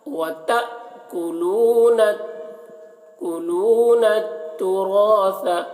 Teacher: حمزہ ساکنہ ہے تو یہاں پر جھٹکا لگے گا تا میں. وتأكلون التراث، را کو پور پڑھ رہے ہیں.